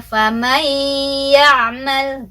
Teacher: Jadi harus ada dengungan ya. Harus konsisten 2 harokat. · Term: idgham bi gunnah